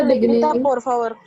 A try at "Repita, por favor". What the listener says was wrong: Repita, por favor. Vale.